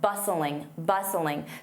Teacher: Notice that T is silent.